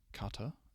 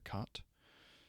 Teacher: This is just the elision, the loss of a vowel when what's followed is another set of vowels that, in this case, a diphthong that's pronounced together as one sound.